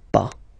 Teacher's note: as usual, final S is not pronounced, so it's pas.